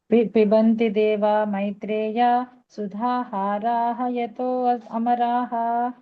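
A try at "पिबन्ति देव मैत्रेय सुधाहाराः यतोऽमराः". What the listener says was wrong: ఇక్కడ సుధా ఆహార అని చదువుకోవాలి. ఎందుకంటే సుధా ఆహారం, అది హారం కాదు. ఆహారంగా చెప్పాలి. సుధాహార అంటే హారం అయిపోతుంది. సుధా ఆహార అలా చదువుకోవాలి.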